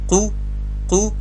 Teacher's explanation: په قل کې د قاف پیش مجهوله کیږي، یعنی قو نه دی، قو دی.